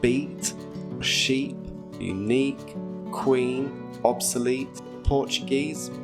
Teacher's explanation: Technically it's called the close front unrounded vowel. We form it by stretching our lips back slightly as if we're going to smile and raising the front of our tongue up inside our mouth.